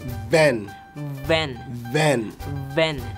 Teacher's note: Look like not W-H-E-N, when when van like when but it's V A N van van Most of the time, if you want to pronounce the V word or the V sound, this your lower lip will go into yes, it will fit into your upper teeth